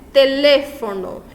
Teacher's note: Em teléfono, a sílaba tônica recai no lê